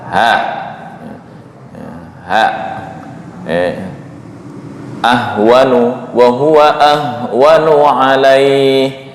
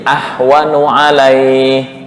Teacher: ha lokasinya adalah di tenggorokan bagian bawah dekat dengan dada, ha ahwanu wa huwa ahwanu alaih, tapi dibaca naik ke tengah menjadi ahwanu alaih. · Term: makhraj huruf ha